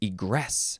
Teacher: you have to emphasize the second syllable, egress